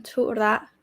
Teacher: Thura, both high tone.